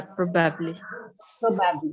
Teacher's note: The stress is on the first syllable, probably.